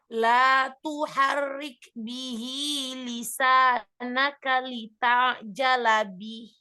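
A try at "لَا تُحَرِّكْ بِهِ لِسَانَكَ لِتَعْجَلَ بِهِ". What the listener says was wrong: Sempurnakan lagi sifatul huruf pada huruf ain ya. Ada huruf ainnya sempurnakan lagi ya. Huruf ain punya sifat apa? Huruf ain apa sifat? Baini, bainiyah, mengalir sedikit. Jadi sedikit dialirkan. Lalu kalau ha punya sifat apa? Ha besar. rokhwah. Ya, alirkan suaranya, alirkan nafasnya ya, rokhwah. Jadi dialirkan. Bih, bih. Dialirkan ya, insyaallah.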